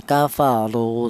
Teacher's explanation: Tafkhim itu artinya tebal, dimana untuk menebalkan huruf ro yang berharokat dhammah ini menggunakan lidah bagian belakang diangkat ke atas